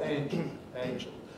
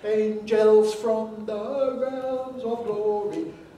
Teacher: the word angel normally pronounced with a weak second vowel